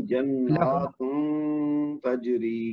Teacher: نون جو مشدد ہے اس کے اوپر کھڑی زبر ہے تو اس کو ہم نے زور دے کے پھر دو حرکت تک کھینچنا ہے